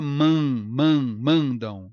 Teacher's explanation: esse M final é uma semivogal e o A com esse M é um ditongo nasal decrescente